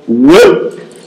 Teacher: For example, whip, it's a bilabial, velarized glide.